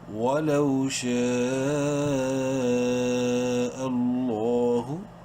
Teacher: لام کو بولڈ کرنا ہے، اور لام کے اوپر کھڑی زبر ہے اس لیے لام کو ایک الف کے برابر لمبا بھی کریں گے · شین کو 5 الف کے برابر اور لفظ اللہ کے لام کو 1 الف کے برابر لمبا کرنا ہے